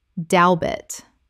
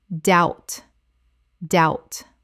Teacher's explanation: The b is completely silent. It rhymes without and shout.